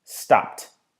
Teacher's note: when I say stopped, I don't say the D, the D, I say T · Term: the T noise